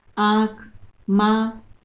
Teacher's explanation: इसका उच्चारण करते समय हवा नाक और मुख से समान दबाव के साथ बाहर निकलती है। अनुस्वार में केवल नाक से नासिका का प्रयोग होता था, लेकिन अनुनासिक में हम दोनों का, नाक का भी प्रयोग करते हैं और मुख से भी हवा को बाहर निकालते हैं।